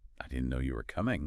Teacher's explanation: If you say it in a completely flat tone, it might sound a bit well robotic or like you don't really care. But try saying it with a slight emphasis, a lift in your voice on no and coming.